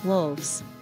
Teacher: notice how we need to use the slightly vibrating V and the yes sound like a buzzing z sound wolves so